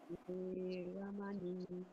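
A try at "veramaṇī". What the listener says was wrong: Okay, remember, don't rush the Veramani. Veramani. Veramani.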